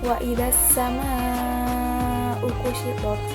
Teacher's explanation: Nah, ini terdapat hukum tajwid mat wajib mutasil karena ada mat tabi'i bertemu dengan hamzah dalam satu kalimat. Cara bacanya 4-5 harokat.